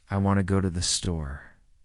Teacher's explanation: The stresses are on want and store. The words to and thee are much softer. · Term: rhythm